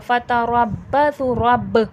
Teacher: बा में खलखले की सिफ़ात वाज़े होगी। रब्बसु, स्वाद वाव पे सू मोटा करके पढ़ा जाएगा, और वाव मद्दा भी हो रहा है यहाँ पर।